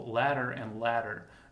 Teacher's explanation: when I pronounce those words in American English, they are often pronounced the same. So ladder and ladder, there is no difference in the sound.